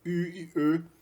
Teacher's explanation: E aqui as vogais, tipicamente germânicas, a gente tem não só as vogais típicas das línguas europeias, como também o U e o E, ou seja, as vogais dianteiras labializadas, né? O U, que é um I labializado, e o E, que é um E labializado